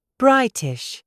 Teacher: There is a tiny pause between the I and the T.